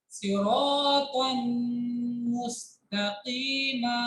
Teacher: तनवीन के बाद मीम अगर होती है तो मीम को तनवीन की आवाज के साथ मिक्स करते हैं और ना करके पढ़ते हैं।